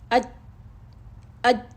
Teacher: ہماری سانس رکی، آواز اپنے مخرج میں بند ہوئی، تو اس میں کیا محسوس ہو رہی ہے؟ شدت محسوس ہوئی نا، قوت محسوس ہوئی نا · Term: صفت الشدہ